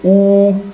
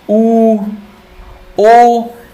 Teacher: तो जैसे आप ऊ का उच्चारण करेंगे, ऊ, पूरा गोल मुंह हो जा रहा है, ऊ, ओ, ये तीनों ही वृत्तमुखी हैं, ठीक है।